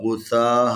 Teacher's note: یہ غین بھی حروف استعلاء میں سے ہے، اس کو بھی موٹا کر کے پڑھنے